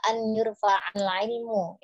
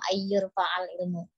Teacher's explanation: Untuk nun sukunnya dibaca an yurfa'al ilmu, ya tidak dimasukkan menjadi idgham ayyurfa'al ilmu.